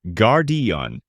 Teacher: with a clear gar and the stress on the first syllable. Gardon, making it sound strong and direct. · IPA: /ˈɡɑːrdiən/